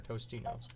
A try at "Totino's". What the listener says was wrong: There's no S. I always call it Tostinos myself.